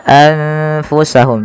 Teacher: tidak lagi dengan jelas suara nunnya anfusahum tapi samarkan ke huruf fa · nun sukunnya bertemu dengan huruf fa, maka nunnya disamarkan kepada huruf fa, maka menjadi anfusahum. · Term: ikhfa